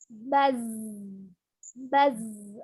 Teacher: Karena dia dhamah, monyongkan kedua bibirnya, zu. Karena dia sukun, kembali ke mahrojnya, ujung lidahnya ada hampir bertemu dengan ujung gigi seri bagian bawah.